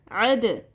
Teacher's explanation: عین زبر دال عد، دال ساکن ہے، دال ساکن کے اوپر ہم قلقلہ کرتے ہیں، آواز کو اپنے مخرج سے ہلاتے ہیں